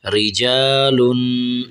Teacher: آگے را زیر ری، جیم الف زبر جا، رجا، لام دو پیش لن، رجالن۔ آگے تھوڑا سا آخر میں غنہ کرنا ہے، آواز کو ناک میں سے نکالنا ہے، رجالن۔ یہ را کو ہم نے باریک کرنا ہے، ٹھیک ہے۔